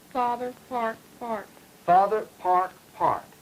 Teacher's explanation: you've got about a half retraction. In other words, your R is about half pronounced